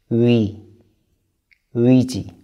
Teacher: we have the vowel 의 It's a combination of 으 and 이